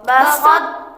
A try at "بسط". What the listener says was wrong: بسط تا، ہلکا سا طا موٹا کریں گے، ہلکا سا، پھر آگے تا بریک ہو جائے گا، بسط، بسط